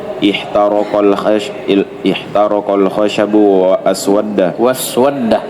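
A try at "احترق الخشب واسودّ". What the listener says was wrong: Itu hamzanya keliru, salah cetak. Hamzanya hamzah wasal, ya, dibuang kepalanya, itu dibuang tanda. Ayo ulang.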